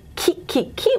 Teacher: for KiKi our lips are very spread okay and it's unrounded